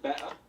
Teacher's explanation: Better. Okay, so he's dropping the T in better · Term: drop of the T